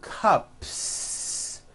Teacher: unvoiced so for example you have one cup or two cups there's no voicing at the end of that word